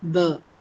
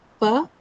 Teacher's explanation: You can hold your hands at the vocal cord or on your throat, and you see as you say or as you try to articulate b as opposed to p, you'll feel a vibration in your vocal cord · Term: voiced sounds